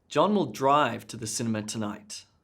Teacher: with the emphasis being on drive he's going to drive not walk